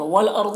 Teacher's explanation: والارض، را کو پر پڑھیں گے، ضاد کو بھی پر پڑھیں گے